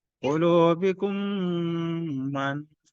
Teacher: Nah, mim sukun bertemu huruf hijaiyah itu kalau mim bertemu mim dan mim bertemu ba, nah itu dibaca dengan dengung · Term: idgham mimi